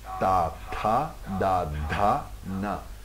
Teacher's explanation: Le ta, c'est le T avec un mahaprana, avec de l'air.